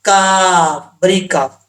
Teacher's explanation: اس کاف کا مخرج ہے زبان کی جڑ اوپر والے تعلق کے سخت حصے سے لگے تو کاف پڑھا جاتا ہے